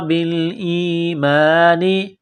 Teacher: با کو حمزہ کے ساتھ ملانا ہے